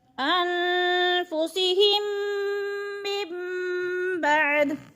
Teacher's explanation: نون ساکن کے بعد حرف با آ گیا ہے تو ادھر نون ساکن کو میم میں بدل کر پڑھیں گے۔